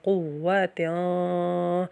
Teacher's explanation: واو زبر وا، قوہ، تا دو زیر، تیان، قوتیان، یہاں پہ نون تنوین ہو رہا ہے اس لیے یہاں پہ ہم ناک میں آواز دے کے جائیں گے